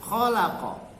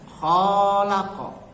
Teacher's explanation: Kemudian juga khalaqa, ini mengenai panjang pendek. Khalaqa, khoknya dibaca pendek, khalaqa, dengan dibaca khok panjang, khalaqa.